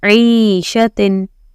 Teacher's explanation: So drag the E, then shatin. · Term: ya madda